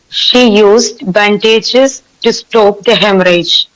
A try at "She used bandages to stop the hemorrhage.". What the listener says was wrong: hemorrhage. Yeah, very good.